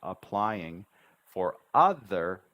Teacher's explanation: This P right here is almost, I don't say apply, applying. I only say one P in this word.